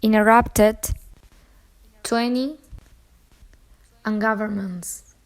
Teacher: the alveolar plosive T is elided after the alveolar nasal N in non-prominent syllables